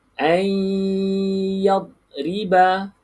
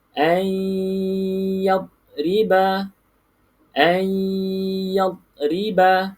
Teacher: Nun kosong, selepas nun kosong tersebut bukan huruf lam dan bukan huruf ra, maka kita baca dengung.